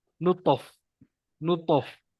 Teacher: Yang kedua, kita langgarkan aja huruf to ni dengan makhraj huruf seterusnya. Contoh makhraj huruf fa, gigi bertemu bibir.